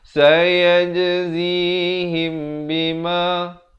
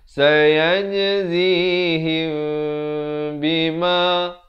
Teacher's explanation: Jadi kalau jumpa mim mati yang kosong, jangan lupa. Kalau jumpa ba, hukumnya ikhfa syafawi, dibacakan dengan 2 harakat.